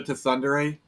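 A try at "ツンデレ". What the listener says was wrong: No, it's pronounced tsundere. You don't pronounce the T. The T is silent.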